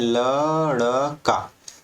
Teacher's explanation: आपका जो जीभ है वो तुरंत ऊपर उठता है जल्दी से और आपके तालू के थोड़ा सा आगे जो मूर्धा है उसको स्पर्श करता है और झटके के साथ नीचे गिरता है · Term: उच्छिप्त व्यंजन